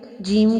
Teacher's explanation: جیم کو جو ہے 4 الف کے برابر لمبا کریں گے